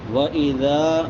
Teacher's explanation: ज़ाल नरम हरूफ में से है और यहाँ पे इसको लंबा करेंगे क्योंकि इसके बाद अलिफ मद्दा है